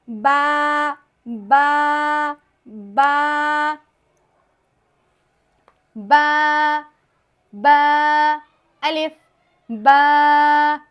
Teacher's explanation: ہونٹوں کے جو تری والے حصے ہیں نا، تری والے حصے کو ملانے سے با ادا ہو جائے گا